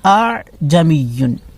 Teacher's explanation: تسہیل کے معنی نرمی، یعنی دوسرے حمزہ کو نرمی کے ساتھ پڑھنا ہے، یہ دوسرا والا حمزہ جو ہے اس کو نرمی سے پڑھنا ہے، یہ نہیں کرنا ہے، اگر کریں گے تو دوسرا حمزہ نرمی سے نہیں ہوگا، اس طرح کریں گے نرمی، اعجمیون، اعجمیون یعنی دوسرا حمزہ نرمی سے لیں گے بہت، اعجمیون، ٹھیک ہے؟